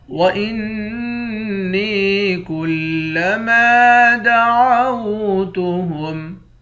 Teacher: حمزے کو نون مشدد کے ساتھ ملا کر نون پر غنہ کریں گے، نون کو یا کے ساتھ ملا کر ایک الف کی مقدار کھینچیں گے۔ · نون کو یا کے ساتھ ملا کر ایک الف کی مقدار کھینچیں گے۔ کاف کے بعد الف ہے، الف حروف مدہ ہے، ایک الف کی مقدار کھینچتے ہیں۔